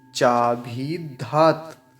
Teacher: भ पर बड़ी ई की मात्रा है तो थोड़ा सा लंबा खींचेंगे